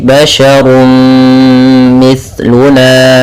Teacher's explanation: masukkan suara runnya kepada mim, maka kemudian menjadi basyarum mithluna. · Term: idgham bi gunnah